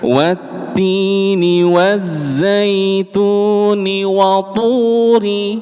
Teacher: Jadi lidah bagian belakangnya itu diangkat ketika mengucapkan huruf th